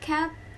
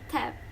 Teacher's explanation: These two words are identical in terms of the vowels and final consonant They only differ by the initial phoneme. And this involves a small difference in place of production. Velar versus alveolar.